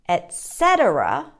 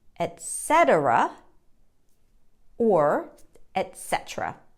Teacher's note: syllable stresses on the second syllable